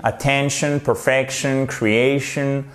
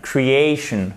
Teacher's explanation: Quand vous avez des mots qui se terminent en shun, attention, perfection, creation, vous avez l'accent tonique sur l'avant-dernière syllabe, c'est-à-dire la syllabe qui est juste avant le shun